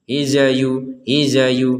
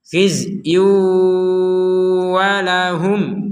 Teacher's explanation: huruf zainya jangan dipantulkan.